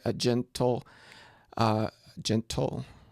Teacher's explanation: there's the unstressed a and then the stressed gentle